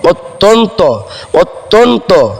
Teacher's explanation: তর সঙ্গে জ ফলা থাকার কারণে ত টা দুইবার উচ্চারিত হবে